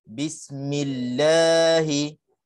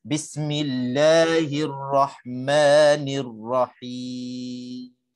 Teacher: Bi tak ada langsung panjang, mi tak ada langsung panjang. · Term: mad asli